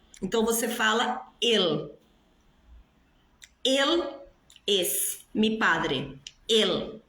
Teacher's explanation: Quando a palavra termina em L em espanhol, esse L tem que ser pronunciado. O L em espanhol, ele não tem som de U. O L em espanhol tem som de L.